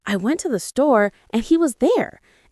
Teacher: One is the high rising terminal or uptalk. This is where you end a statement with a rising intonation like it's a question even when it's not.